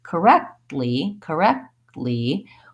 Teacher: same thing with correct correct ly I'm not making those sounds I'm just stopping the air and then releasing with my tongue into the L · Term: stop T